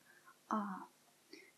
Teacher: this A is the prolonged A, like for example in the word balm